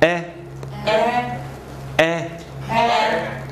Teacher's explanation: 实际上这是指的是高元音，也指的是前元音，整个舌头放平